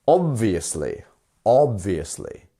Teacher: so we pronounce obviously with a first syllable stress